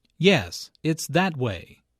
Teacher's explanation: notice the stress on that the speaker is pointing in a certain direction and wants to emphasize that direction i know how you feel